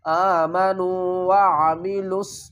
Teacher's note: حمزہ کھڑا زبر آ، میم زبر ما، آم، نون واو پیش نو، واو ساکن سے پہلے پیش ہے، حروف مدہ ہے، ایک الف کی مقدار کھینچ کر پڑھیں گے